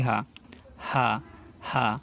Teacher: কণ্ঠনালীর শুরু থেকে উচ্চারিত হয় এই হা